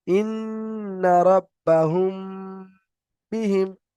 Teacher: মিম সাকিনের পরে যদি বা আসে, তাহলে মিম সাকিনকে একালি পরিমাণ গুণনা করে পড়তে হয়, একে ইকফায়ে সাফাবি বলে।